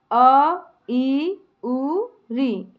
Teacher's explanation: ऐसे स्वर जिनके उच्चारण में केवल एक मात्रा का समय लगे उन्हें हम एक मात्रिक स्वर या ह्रस्व स्वर कहते हैं।